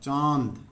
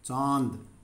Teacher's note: इसकी आवाज़ लंबी है चांद, और मुंह से हवा निकलती है इसको बोलते हुए चांद, नाक से बिल्कुल हल्की आवाज़ निकलती है, हल्की आवाज़ निकलती है, बाकी सारी आवाज़ हमारे मुंह से निकलती है चांद। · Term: अनुनासिक